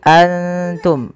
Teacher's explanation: satu huruf ikhfa di antaranya adalah huruf ta cara membacanya samarkan nunnya kepada makhraj daripada huruf Ta